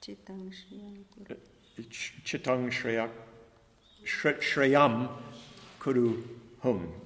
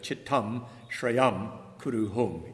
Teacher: Chittang with a nasalized M